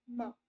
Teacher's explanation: जब आप माँ बोलोगे तो आपकी नाक से भी थोड़ी सी आवाज आएगी, अब आपने नाक बंद कर दी तो माँ पूरा आप ठीक से नहीं बोल पाओगे, जब आपको जुकाम होता है तो आप माँ नहीं बोल पाते, ठीक से क्लियर नहीं बोल पाते, क्योंकि उसमें नेजल नाक का यूज होता है, ठीक है।